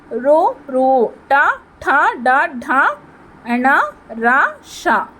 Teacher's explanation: next మూర్ధన్యాలు, తల నుంచి పుట్టి నాలుక సహాయంతో పలుకబడే అక్షరాలు